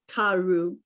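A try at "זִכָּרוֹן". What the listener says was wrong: Karon. Okay, the vav with the dot, that's O. O in my head. Z, a vav with a dot. Z. Ka. Ron. Z. Karon.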